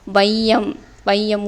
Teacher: முதல் எழுத்து வையம் அப்படின்னு ஒலிக்கும் போது 1.5 மாத்திரை. 2 மாத்திரை இருந்தால் அரை மாத்திரை குறைஞ்சி 1.5 மாத்திரையாக வந்து ஒலிக்கும். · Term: ஐகார குருகம்